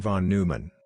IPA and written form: vɒn ˈnɔɪmən (von Neumann)